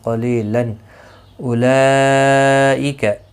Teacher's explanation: یہاں پر مد متصل ہے، 4 الف کی مقدار کے برابر کھینچ کر پڑھیں گے · تنوین کے بعد حروف حلقی کا حمزہ آیا ہے، اظہار حلقی ہوگا، یعنی تنوین کو ظاہر کر کے پڑھیں گے